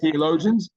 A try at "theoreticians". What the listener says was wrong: there's no L. It's Theoreticians, theoreticians